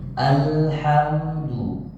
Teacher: Hati-hati lam jangan dipantul